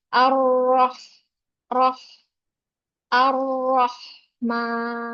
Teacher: jadi r-nya sampai dia ketemu dengan Ha dia tetap tebal